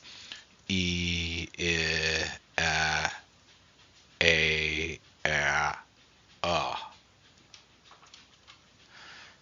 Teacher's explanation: Starting with E and progressing, you'll notice that as you say these sounds, the mouth actually opens wider, the jaw drops lower